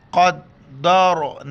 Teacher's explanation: را ساکن ہے لیکن اس سے پہلے دال پر زبر ہے را کو موٹا کر کے پڑھیں گے